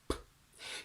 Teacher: The obstruction in the sound p is created by your lips coming together. And when you explode and open them, you get p. So when you want to do a geminated double p sound, you basically hold the obstruction a little bit longer.